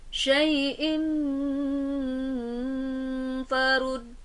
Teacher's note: ada hamzah berharokat kasrotain bertemu dengan huruf fa dan berhukumkan ikhfa hakiki serta cara membacanya harus ditahan